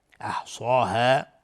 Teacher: صاد از حروف استعلاء غلیظ تلفظ میشه و الف هم تابع صاد غلیظ تلفظ میشه